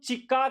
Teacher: बहुत कम वायु बाहर आती है तो इसे हम लोग क्या नाम देते हैं? इसे कहते हैं अल्प प्राण।